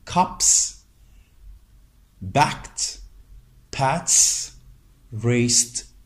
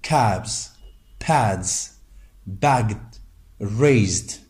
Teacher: s and t are found after voiceless consonants, while z and d are found after voiced ones. You can see the examples here, cups, backed, pats, raced, but we say cabs, pads, bagged, raised, etc.